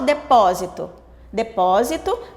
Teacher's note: a sílaba mais forte que é pó está na posição de antepenúltima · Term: sílaba tônica